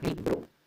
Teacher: ¿En qué sílaba recae la mayor fuerza de voz? En la primera, libro. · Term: sílaba tónica